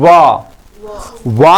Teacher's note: व वा को बोलने के लिए हमें दांत और होठ दोनों का प्रयोग करना पड़ता है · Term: दंत और ओट